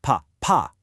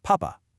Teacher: You really have to punch that final syllable, pa, pa. But check out the exact same letters without the accent, papa.